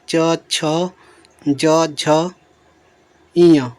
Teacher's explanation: जब आप बोलेंगे तो आपकी जो जीभ है ऊपर जो तालू में जाकर चिपकेगी · इन वर्णों को बोलते समय जो जीभ हमारी है तालु को स्पर्श करती है, इसीलिए इन्हें तालव्य व्यंजन कहते हैं।